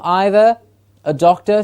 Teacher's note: so we have the first schwa in either